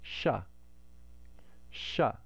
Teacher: tongue in different parts of the mouth in the palatal place we can't make a hissing sound in the guttural place but we can do it in the palatal place it makes sha sha and this is the typical english sibilant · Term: palatal sibilant